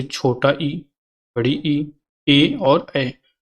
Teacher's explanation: जिन स्वरों के उच्चारण में जीभ का अगला भाग ऊपर उठता है उन्हें अग्र स्वर कहते हैं